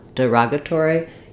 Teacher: the stress falls on the ra syllable, and letter O says the ah vowel